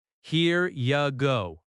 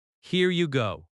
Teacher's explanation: In natural American speech, this often sounds like here ya go. The word you reduces to ya.